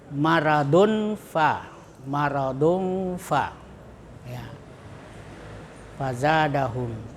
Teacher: Cara membacanya suara nun atau tanwin masih tetap terdengar tetapi samar antara idhar dan idgam, antara terang dan dimasukkan. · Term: ikhfa